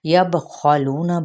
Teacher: یبخلون، با پہ قلقلہ، خا حروف مستعلیہ میں سے ہے، اس کو ہم پر پڑھیں گے۔ لو پہ مد اصلی بالواو کا قاعدہ ہے، نون کی حرکت کو لمبا نہیں کریں گے، اور لو پہ ایک الف یا پھر دو حرکت لمبا کریں گے۔